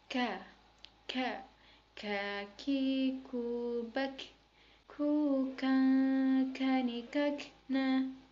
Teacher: dengan menyentuhkan lisan dengan langit-langit bagian belakang, lalu dengan mengalirkan udara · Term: huruf K